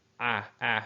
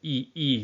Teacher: So your mouth will be open whenever you're making that ah sound, or ah sound. Your mouth is going to be a lot more open. Your mouth is going to be more closed whenever you're producing the ee sound.